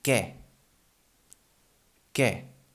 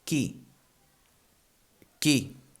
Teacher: the U is not pronounced, so we only keep the K sound from the Q